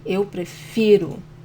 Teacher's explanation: the stronger syllable is fi